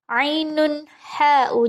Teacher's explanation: Ainun ha'u, dhammatain bertemu dengan ha, dia adalah izhar halqi. Ainun ha'u, jelas tanpa samar, tanpa dengung.